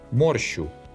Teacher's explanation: Here the щ is short because it's not located between two vowels.